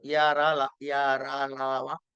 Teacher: కొన్నిటికి తగిలి తగలకుండా ఉంటాయి ఈషత్ స్పృష్టము అన్నాడు అంటే నాలుకతో ఆయా స్థానాల్ని కొద్దిగా స్పృసించి వదిలేస్తాం అన్నమాట ఇవి అంతస్తులు యర